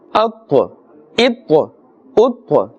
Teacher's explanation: the ta is part of the huruf musta'aliya, letters of the musta'aliya, therefore it must be pronounced with a full mouth